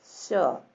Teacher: ये वाला है, इसमें यहाँ पे स्पर्श करते हैं ना, यहाँ पे तालु के पास स्पर्श करते हैं, जो ये बड़ा श होता है, इसको उच्चारण करते समय तालु के पास श।